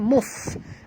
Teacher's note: Bunyikan hamahnya ketap gigi atas ke bibir bawah.